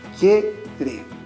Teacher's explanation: pronunciamos en un solo golpe de voz, porque recuerda que no podemos separar la vocal débil de la vocal fuerte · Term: diptongo